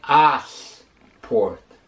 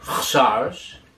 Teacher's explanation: You find a way of, in the middle of sport, finding a vowel, or if you can't find a vowel in the middle of sport, you'll add a vowel to the word sport at the beginning of the word.